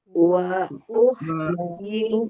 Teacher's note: Ha sukun dia itu mengalir dan tipis. Jadi dia dialirkan dan ketika sedang mengalir bibirnya agak senyum.